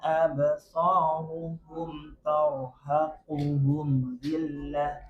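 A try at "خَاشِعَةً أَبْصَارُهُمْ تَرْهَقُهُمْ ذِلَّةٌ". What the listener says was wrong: Sama kayak tadi, ketika kita pengucapan suatu huruf, maka kita fokus ke huruf itu dulu. Jangan terburu-buru untuk lanjut ke huruf berikutnya. Jadi misalkan tadi so-nya dulu ya. Absa dipanjangkan dulu. Enggak usah mikir ru-nya dulu. Nah, kalau sudah selesai huruf so, baru habis itu absaruhum.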